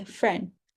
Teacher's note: friend might be pronounced as friend leaving out the d sound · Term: final consonant dropping